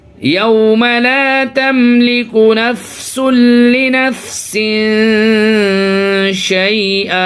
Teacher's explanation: یہاں پہ دیکھیے تنوین کے بعد یعنی 2 زیر ہیں یہاں پہ تو اس کو تنوین کہیں گے. اور تنوین کے بعد حروف اخفا کے 15 حرفوں میں سے شین ہے تو اس کی وجہ سے یہاں پہ ناک میں آواز چھپائیں گے